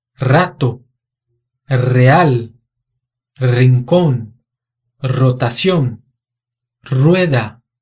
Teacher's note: se o R vem no começo da palavra, ele tem um som vibrante múltiplo